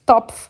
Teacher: Topf é um O aberto e curto, porque duas consoantes depois do O e do E faz com que essas letrinhas fiquem abertas e curtas.